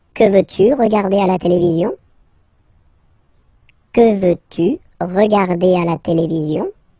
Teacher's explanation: you can hear that I've been raising a little bit my voice at the end